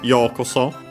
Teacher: The accent is on yo, on the first mora.